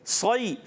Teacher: والصیف میں صاد کو پر کریں گے. صاد حرف مستعلیہ یعنی موٹے پڑھے جانے والے حروف میں سے ہے تو اس کو ہم موٹا کر کے پڑھیں گے